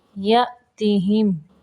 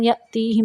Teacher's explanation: تا کو لمبا نہیں کہنا